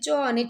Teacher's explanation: તાળવામાંથી બોલાય છે ચ અને છ એ અઘોષ છે